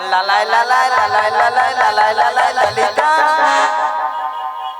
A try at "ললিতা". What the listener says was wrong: নাকি লালাই লালাই লালাই লালাই লালাই লালাই ললিতা? মাসি ওটা লালাই লালাইও নয় আর ললয় ললয়ও নয়, বলো ললিতা। বলো ললিতা।